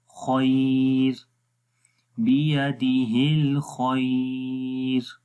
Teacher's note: जब रुकेंगे तो बारीक होगी खैर